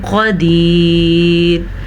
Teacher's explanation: قاف کو پر پڑھیں گے کیونکہ قاف حروف مصالیہ میں سے ہے اور یہاں پہ ہمارے پاس اخفاء کا قاعدہ ہو رہا ہے تو ہم تنوین کی آواز کو چھپا کے پڑھیں گے.